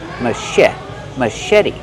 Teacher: The ch makes the soft shh sound like shoe.